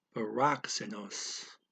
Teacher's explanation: That's a KS sound. The K goes to the syllable before it, and the S goes after. So you got the K in rock, then plus the S in se.